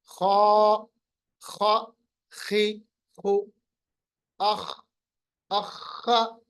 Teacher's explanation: جب ہم زبان کی جڑ کو اوپر کے تالو کی طرف اٹھائیں گے تو یہ حرف خود بخود موٹا پڑا جائے گا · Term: حروف مستعلیہ